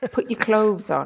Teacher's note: we don't make that th sound. We make a v sound.